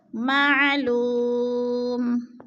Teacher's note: وہ مدہ کو بھی ہم نے ایک الف 2 حرکات کے برابر لمبا کر کے پڑھنا ہے. وہ ساکن سے پہلے لام کے اوپر پیش ہے تو وہ مدہ.